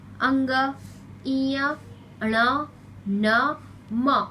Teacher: जब हम इन व्यंजनों को बोलते समय वायु मुंह के साथ साथ नाक से भी बाहर निकलती है। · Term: नासिकीय व्यंजन